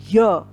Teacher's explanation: य यानी कि तालव्य है ये, तो इसकी जो ध्वनि है वो तालु से ही निकलनी चाहिए